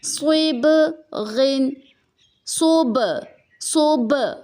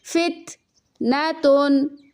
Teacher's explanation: جیسے کہ صوب غین، دیکھیں با کے اوپر سکون ہے تو با میں قلقلہ کریں گے، یعنی ساؤنڈ کو باؤنس دیں گے